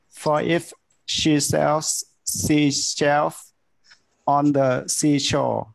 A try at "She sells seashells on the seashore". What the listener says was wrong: ยังแยกแยะไม่ออกระหว่าง sells ตัวนี้กับ shell เนี่ย if sells seashell